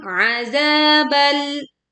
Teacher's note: Azabal dza dibaca sepanjang dua harakat.